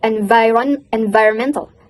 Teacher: So the V sound is a voice sound, which means to make this sound, you need to put your teeth on your bottom lips like V, and let the air come out and turn on your voice